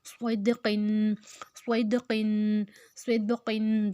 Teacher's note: سواد موٹا اور ساتھ سیٹی